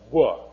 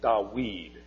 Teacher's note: a W sound and in fact in Arabic it's still DED it's a w sound in Arabic not a v